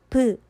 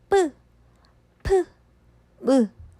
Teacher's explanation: 말 그대로 첫 번째로 입술 소리라는 거는 입에서 두 입술로 내는 소리로 브 를 한번 발음을 해보세요. 브 발음을 했을 때 우리가 두 입술을 잠깐 댔다가 살짝 떼게 되죠. 그 밑에 뿌, 프, 무도 마찬가지예요. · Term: 양순음